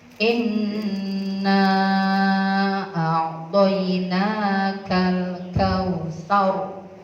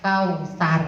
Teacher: roh yang dibaca sukun, yang jatuh setelah huruf fathah itu harus dibaca tebal atau tafkhim